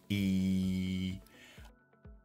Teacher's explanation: the lips are normally spread when we produce it there's that stretch in the lips or a kind of smile if you will that smile in the lips that stretch helps · the brightest sound and our tongue is in its frontmost position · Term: EE sound